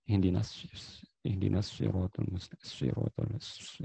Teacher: Suara tambah yang keluar dengan kuat pada ujung lidah dan celah antara gigi seri atas dan bawah. Intinya dia bunyi berdesislah, ya. · Sofir itu bunyi desisan. Kenapa bisa berdesis bunyinya? Karena sempit makhrajnya di sini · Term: huruf sofir